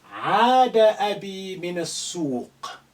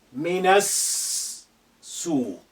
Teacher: The alif is silent because it's not at the beginning of a sentence. The lam is silent because of sin is a sun letter which is carrying shadda. So we linked na to, and with the first sin which is hiding there with shadda, minas suq.